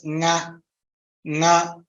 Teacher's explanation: the Nakara is a Kantha Akshara coming from Kantha and it is coming from Nasika. · So the sounds are produced when the air from the vocal cords, vocal folds hits those places. It hits both the Kantha and goes towards the nose. That is why you pronounce nga, nga. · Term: nasal sound